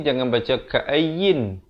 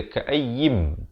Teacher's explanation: Jadi di sini jangan baca ka'ayyin, baca ka'ayyim, terus masuk ke dalam mim dengan dengung dua harakat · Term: idgham bi gunnah